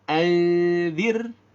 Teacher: Di sini dengungnya adalah dengung ikhfa. Ikhfanya adalah ikhfa yang tarqiq karena hurufnya zal.